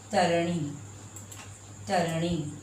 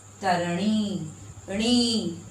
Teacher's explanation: खींच कर बोल रहे हैं क्योंकि यहाँ बड़ी की मात्रा है